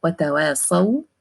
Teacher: the waw at the end is sakina and it is voiced letter waw.